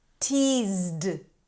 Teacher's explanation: This is a D sound after a Z.